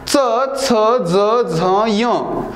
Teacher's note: याचा उच्चार करताना जीभ ह्या वरच्या दातांच्या दातांच्या मागच्या साईडला टेकवावी लागते